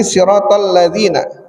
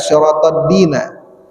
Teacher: siratal ladzina tapi dibaca siratal dina, za diganti da